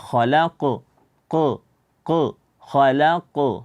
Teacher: qaf di sini dia memiliki sifat Qalqalah dan terdapat pada akhir ayat maka dinamakan dengan Qalqalah kubra dan ingat inat dibaca khalaq bukan khalaq dengan seperti ada Hamzah